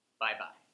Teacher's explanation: You notice how my voice goes up... down a little bit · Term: intonation issue